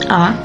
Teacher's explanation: udara mengalir bebas melalui rongga mulut dengan lidah Berada di posisi Tengah dan mulut terbuka lebar